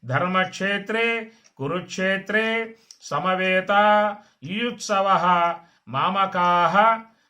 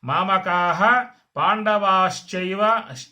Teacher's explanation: మామకాహ అక్కడ దీర్ఘం పెట్టి చక్కగా విసర్గ కూడా పలకాలి. విసర్గ కూడా మహాప్రాణం అది.